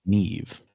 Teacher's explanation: MH turns into sort of a V sound, so that's how we're getting Neve. And I guess those vowels in the middle are kind of doing their own thing.